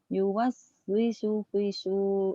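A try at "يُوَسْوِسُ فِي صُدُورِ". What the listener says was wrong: Pi-nya panjang. Pi-nya panjang. Pendek. Yuwaswisu.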